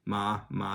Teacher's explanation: there's ma the question particle which is yes or no and this is a fifth tone this is just a blank tone at the end of the sentences